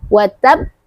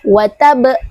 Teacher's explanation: Qalqalah yang paling besar. Cara membacanya adalah berikan dulu tasdidnya baru kita ee berikan sifat qalqalahnya. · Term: qalqalah akbar